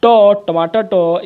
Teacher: आपका ट जो है ये आपका दांतों से इसका उच्चारण, दंत से इसका उच्चारण नहीं होता है